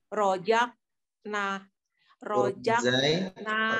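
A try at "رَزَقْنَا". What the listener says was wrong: Ujung lidah tempelkan pada gigi bawah. Masih pada larinya ke huruf jim. Kalau jim berarti tengah lidah. Sedangkan zai ujung lidah aja yang nempelnya pada gigi seri bawah. Adapun pangkal tengah itu dia mendatarnya tidak naik. Kalau naik nanti larinya ke jim.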